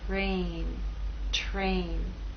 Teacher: And in this last word, T is voiceless. R begins voiceless and takes on a voice sound as we move into A.